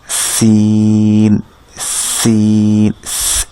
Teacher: সিনের উচ্চারণের স্থানটা হচ্ছে আপনার জিহ্বার আগা সামনের নিচের দাঁতের গোড়া থেকে বা মাঝখান থেকে এই সাউন্ডটা ক্রিয়েট হয় এবং এটাতে একটা তীক্ষ্ণ বাতাস থাকে আর কি। তীক্ষ্ণ বাতাস সহ এটাকে উচ্চারণ করতে হয়।